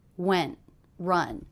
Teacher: Those are the 2 words that have the most shape in the voice, the most length. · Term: stressed words